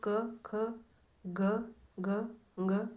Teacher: क वर्ग में अ आ व क ख ग घ ङ तथा विसर्ग ह आएगा और इनका उच्चारण स्थान है कंठ